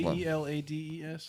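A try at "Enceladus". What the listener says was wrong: No, there's no K in there. It's a C.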